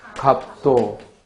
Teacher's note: 그러므로 비읍, 시옷의 대표음, 비읍이 나고 음절 끝에 오는 겹받침은 비읍 하나의 대표음만 나요. 그리고 두 개의 자음이 어울려 있어서 자음군인데 그 대표음, 비읍만 남았으니까 이때는 탈락이 일어났고 이를 자음군 단순화라 해요.